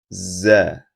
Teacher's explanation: saat membunyikan za hembusan nafas yang terdengar disertai suara yang mendesis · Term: saofir